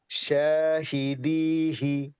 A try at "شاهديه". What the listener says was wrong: হুম, হিতে টান হবে। শাহিদিহি।